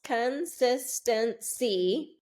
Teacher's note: 4 syllables, consistency. And the second syllable is where we're getting the stress. So if you'll notice on the stressed syllable, we are getting a full pronunciation, sis.